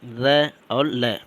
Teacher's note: दंत प्लस मसूड़ से जो आवाज़ आती है उसको हम वत्सर कहते हैं। जैसे छोटा सा र और ल, ये हमारा जो है वत्सर के अंतर्गत आता है।